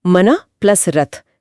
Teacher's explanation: मना प्लस रथ यहां विसर्ग और स्वर मिलकर ओ बन गए।